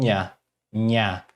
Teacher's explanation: Esse Nhe, esse N com o tio em cima, ele representa a consoante NH do português, que seria nha. Aí nós pronunciamos como nha, nha, com a língua colada ao céu da boca, nha, e ela é uma consoante nasal